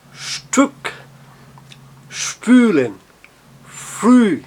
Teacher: você faz a embocadura de um U, mas tenta pronunciar um I. Então ele fica entre um U e um I, com um biquinho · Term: U tremado